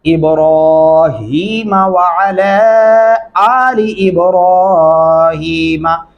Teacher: اور یہاں پہ دھیان رکھنا ہے ابراہیمہ، اکثر لوگ ابراہیمہ پڑھتے ہیں، ابراہیمہ پڑھنا بہت بڑی مسٹیک ہوگی، را کے اوپر کھڑی زبر ہے، آپ نے آواز کو لمبا کرنا ہے